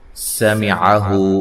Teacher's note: سین کو باریک سیٹی سے ادا کرنا ہے